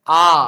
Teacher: आ क्या होगा? विवृत्त होगा, क्योंकि इसका उच्चारण करते समय मुख जो होता है वो पूरा खुलता है।